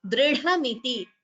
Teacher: dr and followed by dha, Mahaprana